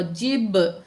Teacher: जब बा साकिन होगा तो यहाँ पे कलकला होगा